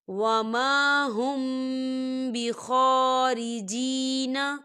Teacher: شکفی ہو رہی ہے، تو ہم یہاں پر غنہ کریں گے، میم ساکن کی آواز کو ناک میں چھپائیں گے